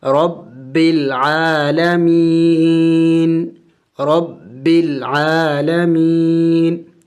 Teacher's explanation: ہم وقف میں اس نون کو سائلنٹ کر دیں گے، یعنی نون کو ساکن کر دیں گے، تو آخر میں نون کی آواز کو نکالا جائے گا، جیسے رب العالمین، رب العالمین.